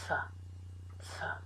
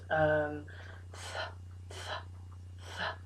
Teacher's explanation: made with the teeth, the tongue, pressing lightly on the back of the top teeth, like this, th, and allowing air to come out. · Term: unvoiced